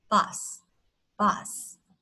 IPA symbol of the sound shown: ʌ